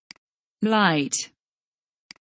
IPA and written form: laɪt (Light)